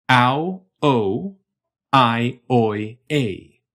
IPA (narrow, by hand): aʊ̯oʊ̯ aɪ̯oɪ̯eɪ̯